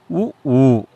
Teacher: உதடுகளை குவிப்பதால் பிறக்கும் எழுத்துக்கள்